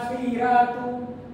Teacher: Jadi Warsh baca ra' secara nipis. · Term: tarkib